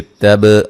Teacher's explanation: با کو ہلا کے پڑھیں گے، قلقلہ ہے